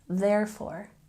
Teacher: don't forget we have a stress on the first syllable